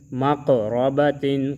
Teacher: قاف میں قلقلہ اور را کو موٹا